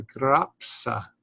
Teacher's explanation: the P and the S get separated as if it's two separate sounds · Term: PS sound